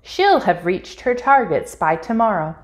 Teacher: in spoken English, it may sound like both the word will and have are being contracted with the subject. For example, she'll have reached her targets by tomorrow.